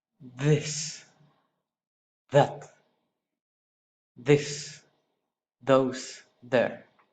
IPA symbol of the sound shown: ð